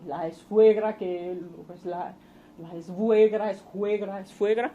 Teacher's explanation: epéntesis de un elemento fricativo en el nexo sue